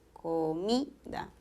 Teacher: En comida, el acento está en mi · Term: acento prosódico